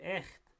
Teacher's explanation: in number 2, echt, we have the palatal fricative with an e to the left and the stop to the right. So if we keep the stop to the right constant, we still get a difference.